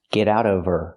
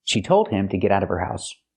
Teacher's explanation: Now we need the Vv sound in of because we don't pronounce the H in her. We link the sounds.